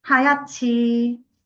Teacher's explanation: 히읗과 지읒이 만나서 치읒으로 바뀌는 현상이 일어났죠